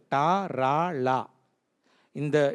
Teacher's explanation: டா, ரா, லா, இந்த 3 வார்த்தைகள் வந்து நம்ம நுனிநாக்கையும் மேத்தாடையும் ஒட்டி உச்சரிக்கிற எழுத்துக்கள்.